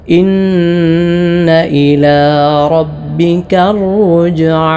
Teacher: ഇന്ന ഷദ്ദുള്ള നൂനാണ്, നന്നായി മണിക്കണം